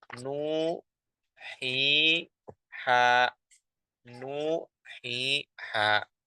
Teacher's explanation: Mad tabi'i ini dibaca dengan 2 harokat